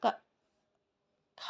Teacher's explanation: खा बोलेंगे तो महाप्राण हो जाएगा, हवा अधिक निकलेगी